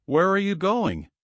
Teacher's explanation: With a downward drop on the last stressed word.